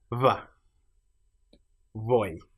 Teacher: And these are pronounced as a a physical cross between saying a b and av by simply having the lips close but not quite touching